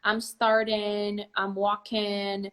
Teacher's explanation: That pronunciation of the ing, pronouncing the ing as an N, I'm starting, I'm walking, is an informal pronunciation for the ing.